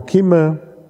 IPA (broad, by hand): ˈkimə